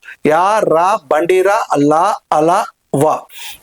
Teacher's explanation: అంగిలి సహాయంతో పలకబడేటువంటి అక్షరాలు అంతస్థాలు